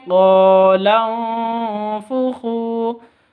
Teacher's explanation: Nun mati bertemu dengan fa, samar didengungkan, siap-siap ke huruf fa-nya. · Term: ikhfa hakiki